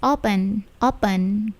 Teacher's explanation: perhatikan P-nya itu tidak plosif